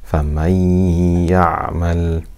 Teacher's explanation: completely merging that noon into the ya with ghunna